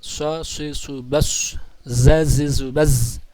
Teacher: huruf-huruf yang mempunyai suara serwit bagaikan siul burung atau belalang. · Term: as-safir